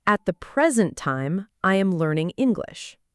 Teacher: >> Yes, that's the key. Whenever present is a noun, a gift or now, the stress stays on the first part. >> Not complicated at all, right?